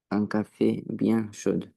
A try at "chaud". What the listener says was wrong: C'est pas chaude, c'est chaud.